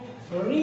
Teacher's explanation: री जो है वो मूर्धन्य है